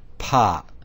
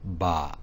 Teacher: even the aspirated pop is softened to a BA